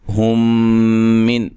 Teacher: ہم من، یہاں میم ساکن کا ادغام ہے، ادغام، ٹھیک ہے، میم ساکن کا ادغام ہے، غنہ کر کے پڑھیں گے